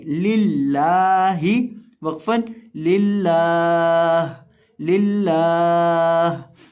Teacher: तो अब यहाँ हम लफ्ज़ अल्लाह के लाम को मोटा नहीं करेंगे, बारीक करके पढ़ेंगे